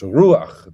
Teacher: The accent is on the U, and it's just a short A · you have the patach furtivum, which is an unaccented epenthetic vowel